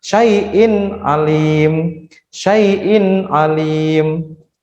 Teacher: ada huruf hamzah yang harokatnya itu kasrah tanwin bertemu dengan huruf ain, maka dia dihukumi idhar halki. Jelas satu ketekan, tidak boleh dengung